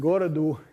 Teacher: The word for town, gorod, is an unaccented word, and that means that it has stress on the first syllable, because the rule is stress the first syllable if there aren't any lexically accented syllables. And the dative singular suffix u that's showing up for this class of nouns is also lexically unaccented, so it doesn't do anything to the stress